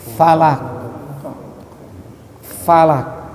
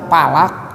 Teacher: Fa ujung gigi atas kena ke tengah bibir bawah.